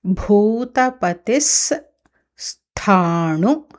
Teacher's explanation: సకారం ఉంది కాబట్టి దాని తర్వాత విసర్గ సకారం అవుతుంది